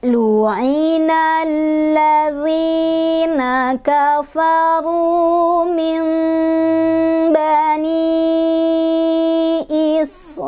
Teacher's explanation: nun ketemu ba. Nunnya ditukar dengan bunyi mim. Cara bunyikannya, boleh rapat bibirnya, boleh renggang sehelai kertas. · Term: iklab